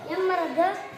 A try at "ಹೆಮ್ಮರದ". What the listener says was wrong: ಹೆಮ್ಮರದ. ಹಾ ಸೌಂಡ್ ಬರಬೇಕು. ಹೆಮ್ಮರದ. ಎಮ್ಮರದಲ್ಲ, ಹೇಳಕತ್ತೀನಿ ನೀನು. ಹೆಮ್ಮರದ ಎಮ್ಮೆ ಆಗುತ್ತದೆ. ಹಾ, ಎಮ್ಮೆ ಅಲ್ಲ, ಹೆಮ್ಮೆ. ಹಾ ಸ್ವಲ್ಪ ಉಸಿರು ಬಿಡು.